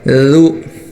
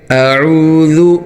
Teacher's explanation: زبان کی نوک کو دانتوں کے درمیان دے کر نرمی سے یہ لفظ نکالنا ہوتا ہے. دانت بند نہیں کرنے، زبان تھوڑی سی باہر نکالنی ہے اور نرمی سے. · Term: ذال